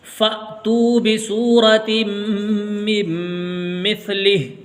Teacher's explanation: جب الف کے اوپر ساکن آتا ہے تو اس کے اندر جھٹکا لگتا ہے